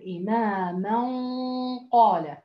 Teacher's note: وهنا في موضوع إنه الحرف الذي بعده مفخم فالغنة هنا مفخمة